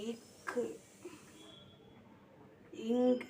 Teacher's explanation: இரு மெய் மெய்களும் நாவின் முதற்பகுதி அன்னத்தின் அடிப்பகுதியில் பொருந்துவதல்